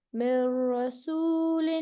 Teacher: نون کو نہیں پڑھنا ہے یہاں پر, نون کو ڈائریکٹ را سے ملانا ہے